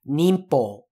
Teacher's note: whenever the sound in appears before a p or a b basically that n sound turns into an m